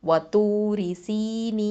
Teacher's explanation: அப்போது 2, 4, 6 ஹரக்கத்தளவு வரைக்கும் நீட்டி ஓதி நிப்பாட்டலாம்.